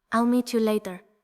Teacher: in British English, T sometimes almost disappears completely.